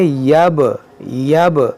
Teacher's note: با ساکن ہے تو اس میں قلقلہ کریں گے